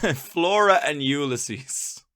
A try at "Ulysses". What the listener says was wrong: No, not Flora and Ulysses. Flora and Ulysses. They're pronouncing it incorrectly. They put the emphasis on the wrong syllable.